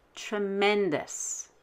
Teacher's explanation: END is vowel, consonant, consonant. So we will stress the END.